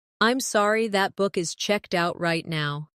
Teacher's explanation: Stress checked out to make it clear.